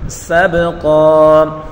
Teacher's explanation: سین کو تیزی کے ساتھ پڑھیں گے اور با میں قلقلہ کریں گے، قاف کو پر پڑھیں گے